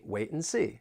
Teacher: when you have the T followed by an N, that T may get changed to a glottal T